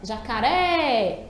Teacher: a gente demora mais na última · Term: sílaba tônica